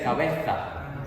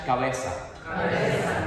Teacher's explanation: We don't make any distinction in between Z, C, and S. It's all S, like S.